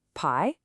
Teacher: The second character pi is a rising second tone almost like you're asking a gentle question.